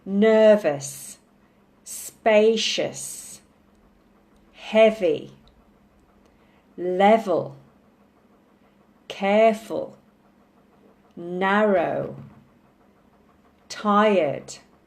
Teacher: so on two syllable adjectives you stress the first syllable